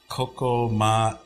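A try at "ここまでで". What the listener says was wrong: It means, I think it's kokomadede. Kokomadede. Not matete, but dede. Kokomadede. Kokomade means up till here. Kokomade. De is another particle. Kokomade de. So dede is what it is. So it's instead of te, you can probably find kokomade.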